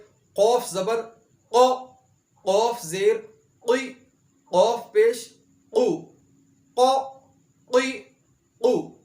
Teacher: آخری حروف مستعلیہ کا حرف قاف، اس کو زبان کی جڑ اور اوپر کے تالو کے ساتھ ادا کیا جاتا ہے